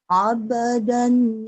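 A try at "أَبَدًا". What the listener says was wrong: aba, aba, jangan abe, abe, abe, abe, abe, jangan aba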